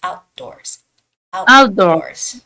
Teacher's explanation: you don't have to make the T sound it's not out the doors it's outdoors